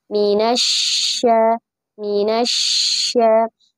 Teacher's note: shin juga memiliki sifat rokhawah ya. Artinya durasinya panjang ya ketika membaca huruf shin